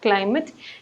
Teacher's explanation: in the word climate, you should stress the portion CLI so that it will come out perfectly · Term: stressing the first syllable